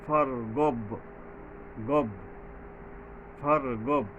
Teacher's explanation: বাইর উপরে জজম আছে, তো এখানে কলকলা হবে, প্রতিধ্বনিত হবে